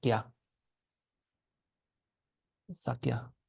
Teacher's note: Then we pronounce the ka, and then the ya sound goes in between the ka and the a, so it becomes kya